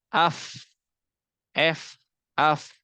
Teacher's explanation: kan apa ee menempelkan dua bibir f tapi kalau misalkan dia tidak memakai dua bibir tapi mengandalkan ujung gigi seri atas dan bibir badan bawah maka menimbulkan huruf Fa AF F AF